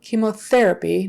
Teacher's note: Make sure you get the th in therapy, tongue between the teeth just slightly